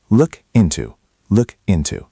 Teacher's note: The K in look links to the I in into.